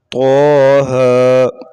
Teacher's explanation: یہ کھڑا زبر ہے، اسے ایک الف سے زیادہ نہیں لمبا کرتے